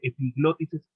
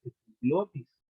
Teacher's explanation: no va con acento en la I